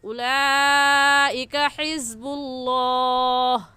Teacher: उलाइका हिज़्बुल्लाह, यहाँ पर भी उलाइका में मद्दे मुत्तसिल और मद्दे वाजिब है और इस मद को 4 अलिफ की मिकदार खींच कर पढ़ेंगे। हिज़्बुल्लाह में लफ्ज़ अल्लाह से पहले पेश आ गया तो लफ्ज़ अल्लाह को पूरी यानी मोटा करेंगे और ऐसे कहेंगे उलाइका हिज़्बुल्लाह।